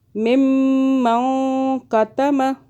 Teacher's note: نون کو چھپائیں 2 سیکنڈ کے لیے اور میم پہ گنہ کریں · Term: اخفاء